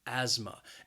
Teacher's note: the word has two syllables and the stress is on that first syllable that second syllable has that schwa